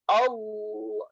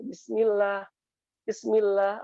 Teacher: kalau yang tafkhim yang tebal itu rahang itu keangkat